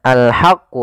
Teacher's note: ha kecil dibaca dengan ha, alirkan nafas